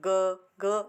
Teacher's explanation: हम ग कहेंगे तो हल्का सा कंपन होगा, हमें हमारे मुंह में हमें फील होगा ये हल्का सा कंपन जब हम ग बोलेंगे। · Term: घोष